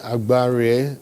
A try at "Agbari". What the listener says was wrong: You're not pronouncing the M. Agbari.